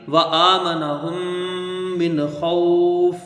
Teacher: آگے دیکھیں وآمنہم من خوف، واو کو جلدی پڑھا جائے گا، زبر ہے، حمزہ کے اوپر کھڑا زبر ہے، اس کو ایک الف کی مقدار کھینچ کے پڑھیں گے